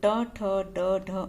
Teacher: मूर्धन्य में ट वर्ग आता है, तो ट ठ ड ढ अण आएगा।